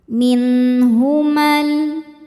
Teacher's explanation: Alif lam nya dinamakan alif lam syamsiyah. Sebab alif lam menghadapi huruf syamsiyah yaitu lam. Maka alif lam nya tidak dibaca. · Namun jika diwasalkan, ma nya pendek. Alifnya gugur, ada proses namanya takhallus bil hadzfi.